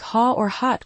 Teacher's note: >> And British English for hot. >> It's a more rounded O sound >> like a softer O perhaps.